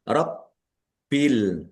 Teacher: baknya dibaca double, ada tasdidnya, ditekan dan ditahan biar tampak doublenya.